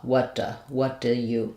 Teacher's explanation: we don't typically say the oo vowel in do. It's an unimportant word. It's just supporting the later verbs in the sentence here. · that oo sound becomes a schwa sound, like what do you. Then next, because we have a T followed by a D, we don't typically say what duh.